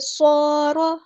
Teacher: یہاں پر الف مدہ آ گئی ہے تو مد اصلی ہوگی. جو الف ہے ہم ہیوی ادا کریں گے. را ہمارا ہیوی لیٹر ہے.